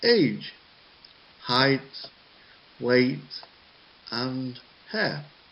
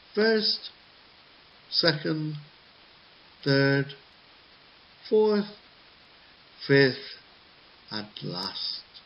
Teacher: So, the last item, there is a falling syllable. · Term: lists in sentences